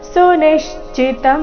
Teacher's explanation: ಸುನಿಶ್ಚಿತಂ ನೀ ಮೇಲೆ ಆಘಾತ.